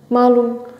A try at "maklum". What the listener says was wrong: Maklum. Yes, we're using K. Maklum.